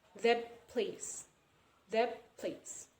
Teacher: It is actually T sound, but since it is according to assimilation, this will be P sound.